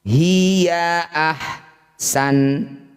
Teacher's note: Nun huruf terakhir ketika sudah disukun didengungkan tapi satu ketukan saja.